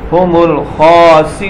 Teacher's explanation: وقف کی حالت میں ہم نون کو ساکن کر دیں گے